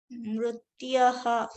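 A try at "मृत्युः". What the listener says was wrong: Mrityuhu. Ukara. You see the ukara here? Mrityuhu.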